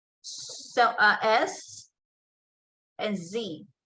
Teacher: Alveolar fricatives, there's S and Z. So S and Z. There is a hissing.